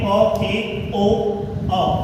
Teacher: जब इन स्वर का उच्चारण करते हैं तो मुख द्वार सिर्फ आधा ही खुलता है। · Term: अर्ध विवृत